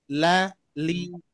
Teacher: hak hurufnya dibaca tipis atau tebal kira-kira ah yang disebut mustahak lam haknya adalah dibaca tipis